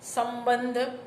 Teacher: ઓષ્ઠ્ય અનુનાસિક મ, સંબંધ